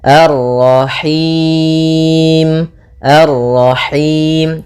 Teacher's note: enggak mau dia Lepas dari yang namanya masuk hidung dan juga lepas dari namanya imalah yaitu harus kasrah sempurna